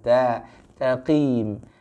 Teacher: huruf ta harus dibaca dengan tipis. Ya, yang dibaca dengan isti'la itu huruf qafnya. Jadi huruf ta-nya harus dibaca dengan istifal.